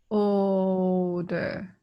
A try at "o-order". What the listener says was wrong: Ka o order. O o order. o order. Yes, you will still have to repeat that first syllable. O order. So that is only when the vowel has an R. Or another thing is, for example, it's three letters. The first syllable is three letters.